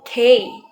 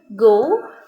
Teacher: suara yang dihasilkan itu dengan bagian belakang lidah menekan pada langit-langit lunak